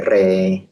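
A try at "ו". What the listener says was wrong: Ini huruf verb, ini bukan res Pak, ini verb.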